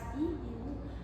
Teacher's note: Temos a posição alta, o I e o U. Então, quando pronunciamos essas vogais, I e U, a posição da nossa língua vai ficar na posição alta